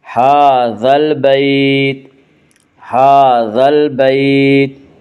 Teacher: ہا کے اوپر کھڑا زبر ہے، کھڑا زبر کو ایک الف کے برابر کھینچ کر پڑھیں گے۔